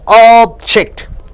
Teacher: So when you stress on ob, it means object.